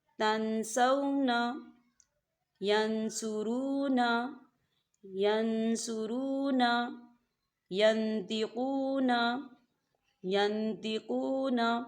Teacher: یاد رہے یہاں غنہ ہوگا اور وہ جلدی سے ادا ہوگا، اسے بالکل نہیں کھینچا جائے گا۔